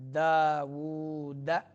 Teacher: سلیمان داود، واو کے اوپر الٹا پیش ہے تو کھینچنا ہے اس کو۔ داود، دال شدیدہ حروف میں سے ہے تو سختی کے ساتھ ادا کیا جائے گا یہ حرف